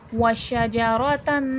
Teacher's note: شین میں تفشی، شین کی آواز پھیلاؤ کے ساتھ پڑھی جائے گی. وشجرۃ، تن میں تنوین ہے، دو زبر دو زیر دو پیش کو تنوین کہتے ہیں، تنوین غنہ کر کے پڑھا جاتا ہے.